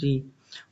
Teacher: मूर्धन्य ह्रस्व स्वर का उदाहरण है ऋ